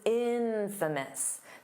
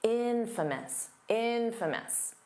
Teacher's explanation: The syllable stress is on the in, so it's not infamous.